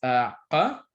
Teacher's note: One example is qa, which it basically sounds like a K, but like really far back in your throat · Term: uvular qa